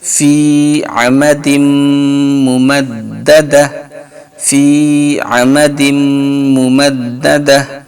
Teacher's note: میم میں تشدید ہے اس لیے ہم کیا کریں گے؟ میم میں غنہ کریں گے